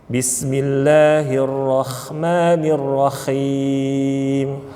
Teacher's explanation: bapak-bapak huruf H kecil di sini sering kali kalau orang Jawa biasanya bacanya diubah dari H menjadi kha